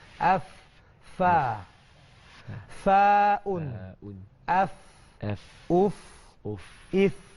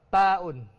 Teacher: Kita punya fa ni, kita punya gigi atas ni bertemu dengan bibir bawah. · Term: huruf fa